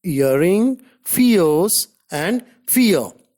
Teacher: a glide from a centralized front unrounded vowel just above half close to a central unrounded vowel between half close and half open in non-final words.